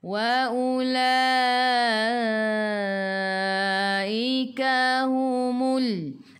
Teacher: La baris mat bertemu dengan Hamzah di bawah rumah ya. Mat wajib 4 atau 5 harakat.